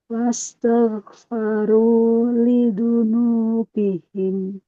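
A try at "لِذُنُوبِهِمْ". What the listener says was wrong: Jangan lidunu tapi lizu, zazizu, lizunubihim.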